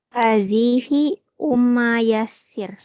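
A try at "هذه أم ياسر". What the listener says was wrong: Enggak ummu, dhamma.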